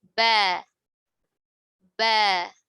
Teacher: Perhatikan makhrajnya ada di dua bibir, bukan di gigi, bukan di lidah ya, dari dua bibir. Dan posisi lidah turun ya, karena dia huruf tipis.